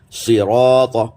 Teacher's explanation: یہ را موٹا ہے تو الف بھی موٹا ہو گیا، الف سے پہلے را آ گیا